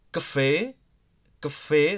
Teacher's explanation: Look here in cafe, if you noticed, I give high stress on e, because e has the cap right here, a small one, tupi.